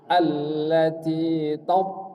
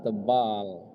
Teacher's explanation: to-nya tebal. Iya, ujung lidah bertemu dengan gusi atas ya. Isti'la, itbaq.